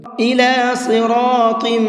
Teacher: صاد کو منہ بھر کے پڑھیں گے اور طم کے اندر غنہ کریں گے، اس لیے کہ تا کے نیچے تنوین ہے اور تنوین کے بعد میں میم ہے۔